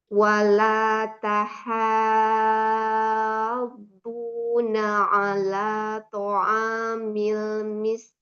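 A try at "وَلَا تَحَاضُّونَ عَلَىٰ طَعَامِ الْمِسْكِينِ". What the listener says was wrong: Alanya gimana? Kerasanya gimana alanya? Ala masih keangkat. Tapi memang di awalan tadi udah bagus, lamnya udah mulai tipis, jadi udah tahu gitu.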